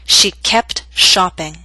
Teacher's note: Now in careful speech, you would hear the T.